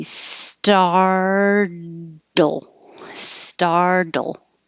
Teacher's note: my tongue is going up to the td position which is the same as the l position so to make the l heard you have to quickly release · the second t changes to a d and you don't have to make a really clear second syllable